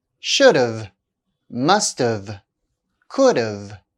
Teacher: After a consonant, the contraction of have is pronounced of.